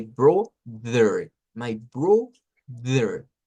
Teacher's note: la TH vibrante suena parecido a una letra D, pero no es igual